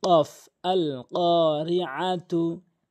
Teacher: এখানে কফটি জিহ্বার গোড়া থেকে উপরের তালুর সঙ্গে ধাক্কা দিয়ে উচ্চারণ করবেন।